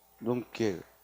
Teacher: 눈길의 경우에도 된소리가 일어났어요